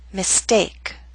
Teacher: with the St we do not have the strong puff of air